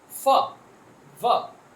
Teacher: these are produced with the help of your lower lip and upper teeth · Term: labiodental